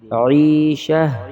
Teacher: وقف کی حالت میں ہا کو اوپر جھٹکا نہیں دیں گے